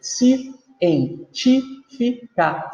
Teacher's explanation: Se eu conto de trás para frente, a sílaba tônica é a sílaba ti e é a antepenúltima. Então, ela é uma proparoxítona.